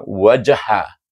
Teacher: secara automat perlahan kerana asalnya kalau kita berhenti pada waj bunyi ja tu kuat bila kita sambung dengan ha wajha makna ada lantunan tetapi perlahan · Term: qalqalah